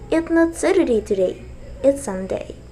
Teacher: It's not Saturday today, it's Sunday. Here, it's Sunday is new information, so you can pronounce it with falling tone